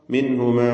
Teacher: സാക്കിനത്തായ നൂൻ ശേഷം ഹാ ഇൽഹാർ ഹൽഖിയാണ് ഹൽഖിന്റെ അക്ഷരമാണ് ഹാ എന്നതുകൊണ്ട് മണിക്കാതെ വെളിവാക്കണം